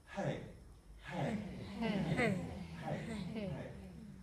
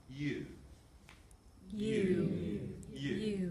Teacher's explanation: And how on the simultaneous onset there's hardly any breath coming through, but the aspirate onset really is quite fluffy, doesn't allow for much gravitas.